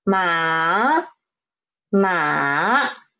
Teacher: started from the pitch 2 and drop to pitch 1 and then rise up to pitch 4. This is ma, third tone.